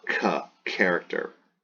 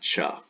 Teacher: it's not just the K sound, but there's also an H behind it, an aspirate